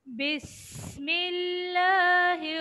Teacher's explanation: سین میں سیٹی کی آواز